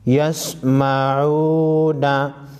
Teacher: वाव मद्दा है, एक अलिफ के मकदार खींचेंगे।